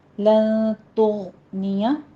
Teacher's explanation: لن تغنیہ میں نون ساکن کا قاعدہ اخفا کی کریں گے، غین کو مفخم پڑھنا ہے، تو لن تغنیہ ادنا حلق سے اس کو ادا کرنا ہے